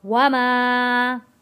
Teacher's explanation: میم الف زبر ما، الف ہے، الف سے پہلے زبر ہے، ایک الف کے برابر کھینچ کر پڑھیں گے